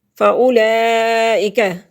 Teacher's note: حروف مدہ کے بعد حمزہ آ گیا تو مد متصل ہے، 4 سے 5 الف تک اس کو کھینچنے کی مقدار ہے